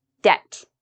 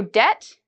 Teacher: the b in the pronunciation debt you shouldn't hear the B I did not pronounce the b because when you have B and right after T usually you don't pronounce the b